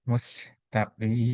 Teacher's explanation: Nah, ini kembali idgham bi gunnah. Sin ini sifatnya berdesir, ya. Berdesir satu dua. Tidak boleh lebih, ya, dari dua. Tidak boleh tidak ada juga.